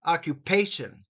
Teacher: the emphasis here is on pay